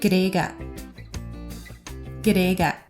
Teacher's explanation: the first ga is really weak with a schwa sound, whereas the final ga has more of a classic ga sound